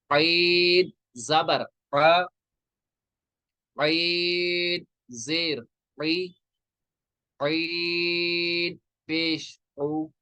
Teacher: ये जो आइन है ना, आइन जो है, आइन को हम कहाँ से निकालेंगे, हलक के दरमियानी हिस्से से, मिडल ऑफ द थ्रोट से।